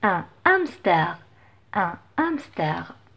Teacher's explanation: je ne peux pas faire la liaison donc c'est interdit dans ce cas parce que le h est aspiré